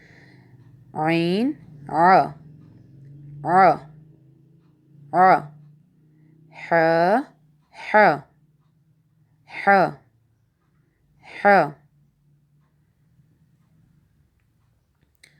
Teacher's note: عین اور حا حلق کے درمیانی حصے سے ادا کیا جاتا ہے۔